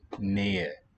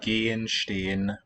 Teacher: In a word like Nähe, you have a written H coming between the stressed and an unstressed syllable. That H should be silent, like we do in English too.